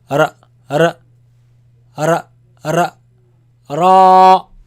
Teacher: And this sound actually, it comes from the tip of the tongue touching the front palate roof.